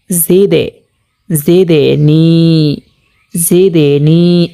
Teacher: হরকতের বামে এই 5 হরফে জজম হইলে কলকলা করিয়া একটু ধাক্কা দিয়ে পড়তে হয়। তাহলে আমরা এখানে দেখতে পাচ্ছি জের হরকতের বামে 5টি হরফ থেকে একটি হরফ দাল আসছে, তো এখানে কলকলা করিয়া ধাক্কা দিয়ে পড়ব।